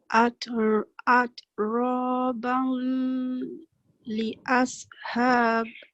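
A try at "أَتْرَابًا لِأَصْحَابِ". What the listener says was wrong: Bal ni cuba kasih jangan dengung lagi.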